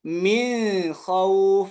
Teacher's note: Jadi ketika membaca min khauf bukan izhar melainkan ikhfa.